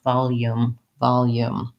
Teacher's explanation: you want to avoid going right from the L to the ooh and have your connecting yo sound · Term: Glide, connecting y sound